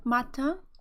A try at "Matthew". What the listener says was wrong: She struggles a little bit with certain sounds like TH, but we're going to be working on her pronunciation.